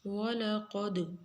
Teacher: قاف موٹا دال کے اوپر قلقلہ